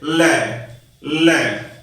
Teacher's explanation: जिन व्यंजनों का उच्चारण करते समय मुंह के दो अंग मिलकर हवा का बीच से निकलने वाला मार्ग रोक लेते हैं और वह इधर उधर से बाहर निकलती है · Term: पार्श्विक व्यंजन